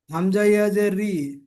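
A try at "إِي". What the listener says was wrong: রি নয়, হামজা। হামজা ইয়াজের রি হবে না, হামজা ইয়াজের ই হবে, ই ই।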